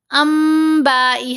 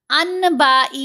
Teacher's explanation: نون ساکن یا تنوین کے بعد اگر با آ جائے تو ہم نے نون کی آواز کو میم کی آواز میں بدل کر پڑھنا ہے. یہاں ہے نا نون، اس کے اوپر یہ چھوٹا سا میم بھی ہے. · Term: اقلاب